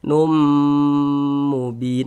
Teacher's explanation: Maka ini hukumnya idgham bighunah. Cara membacanya bunyi tanwinnya dimasukkan ke huruf mim kemudian dighunahkan.